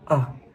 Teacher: It has a soft vowel length, low pitch, soft loudness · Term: unstressed